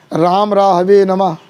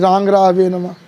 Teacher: तो इस प्रकार से ये अनुनासिक, लेकिन अनुस्वार जो होता है ये अनुनासिक भी है, लेकिन इसका उच्चारण प्रातिशाख में भी कहा गया है कि अनुस्वार से अर्धमकार सदृश उच्चारण करना चाहिए। मकार का जो है अर्ध मतलब अनुस्वार का अर्धमकार तरह, क्योंकि मकार से उत्पन्न है तो उसको हम बोलेंगे।